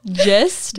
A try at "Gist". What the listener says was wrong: It's Gist with a hard G.